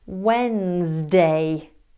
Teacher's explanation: You don't use the D. You don't pronounce the Nez.